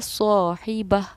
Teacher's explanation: گول تا پر جب ہم وقف کرتے ہیں تو وہ ہماری ہائے ساکنہ ہا بن جاتی ہے، اسی لیے ہم نے اس صاحبتن کو پڑھا ہے صاحبہ۔